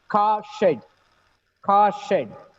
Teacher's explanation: Here, we don't pronounce the R in the word car, right?